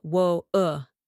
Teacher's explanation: the British glottal stop where the t is almost swallowed